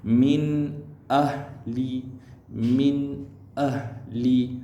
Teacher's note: Dibaca tanpa dengung, dibaca dengan jelas, nyata dan terang.